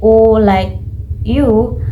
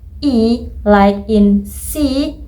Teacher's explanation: when you say U like you, your lips are rounded, which means they are more curved and closer together